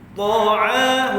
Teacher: huruf ta tebal, hujung lidah sentuh antara gusi dan gigi atas ataupun pangkal gigi atas, kemudian kita itbaqkan dia tebal, munculkan bibir kita. Ta huruf ain dengan kerongkong mad asli.